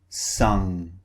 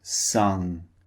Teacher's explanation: we're using the back of our tongue, okay? The back of our tongue raises up and blocks the air. Sung. The mouth is also very slightly open.